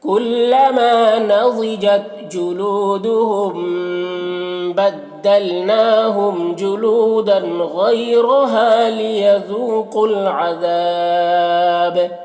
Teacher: عذاب ذال کو باریک پڑھنا ہے اور یہاں پر بھی الف مدہ ہے تو ایک الف کے برابر کھینچیں گے اور با میں وقف کریں گے تو با میں قلقلہ ہوگا